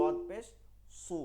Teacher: মোটা হয়ে যাবে উচ্চারণটা এমনিতে পেশ পেশই থাকবে কিন্তু কি হবে মোটা হয়ে যাবে